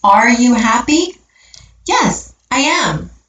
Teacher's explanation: if the answer is yes the verb is said a little louder than the other words